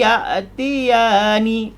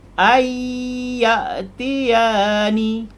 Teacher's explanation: kita masuk dari Alif Hamzah ni terus ke huruf ya masuk jadi non hilang terus masuk ke ya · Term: idgham maal ghunnah